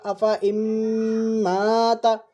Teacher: نون کی جگہ پر میم پڑھا ہے، میم پہ تشدید ہے